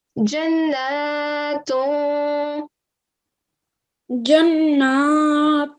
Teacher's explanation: So in this case, the ta is not part of the throat letters, and therefore that dammatain, you're giving a nasal sound, like a concealed hidden nasal sound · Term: concealed nasal sound